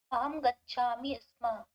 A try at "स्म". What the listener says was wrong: अस्मा अत्र आ इति नास्ति। यथा वदन्ति स्कूल, तर्हि स्कूल न भवति, अत्र तत्र इकारः न भवति, स्कूल भवति न, स्कूल। तर्हि अत्र अस्म नास्ति, अस्म। ददाति अस्म, नयति अस्म, अस्म नास्ति, स्म स्म स्म। अतः एवं प्रकारेण उच्चारणं कुर्वन्तु।